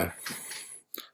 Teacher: So when you're producing M, the sound, it is a nasal sound, as we mentioned. The place of articulation is bilabial.